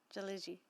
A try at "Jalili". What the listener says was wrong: It's Lily at the end. L-I-L.